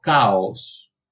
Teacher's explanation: el sonido de la K, de la oclusiva velar sorda